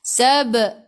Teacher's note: Sab'am daripada kerongkong, bukan daripada hidung.